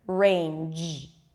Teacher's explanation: also the the voiced consonant at the end in range e you want to feel your vocal cords vibrating at the end